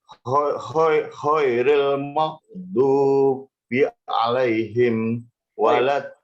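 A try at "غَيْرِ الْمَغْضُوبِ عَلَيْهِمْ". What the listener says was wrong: Tadi masuk kho ya. Kho itu satu makhraj itu Pak. Satu makhraj. Nah, Bapak tinggal mengeluarkan suara dari pita suara. Yang tadinya khairil tapi dinaikkan. Ghairil. Naikkan suaranya. Makrosnya sudah sama. Ghairil.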